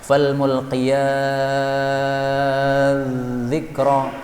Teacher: Kemudian pada surah Al-Mursalat pada ayat yang ke-5 ini boleh dibaca dengan idgham, fal mulqiyati dzikra, taknya diidghamkan kepada dzal sehingga taknya hilang